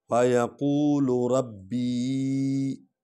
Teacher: ربی کو لمبا کریں گے کیونکہ اس پر مد ہے، مد کا معنی ہے کھینچنا